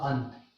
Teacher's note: अब सामने क्या है, तय, तो तय वर्ग का ही 5वां वर्ण इस अनुस्वार के स्थान पर होगा